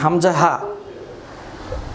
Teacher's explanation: তাহলে এটাই হচ্ছে 1 নম্বর মাখরাজ, হামজা, হা উচ্চারিত হয় কণ্ঠনালীর শুরু থেকে। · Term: হরফে হালকি